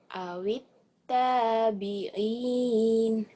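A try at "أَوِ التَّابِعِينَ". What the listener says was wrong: Awit tabi'in. Jadi ujungnya jangan gitu ya. Langsung aja. Awit tabi'in. Lebih melengking. Nah, cuman itu karena artikulasinya aja belum lepas.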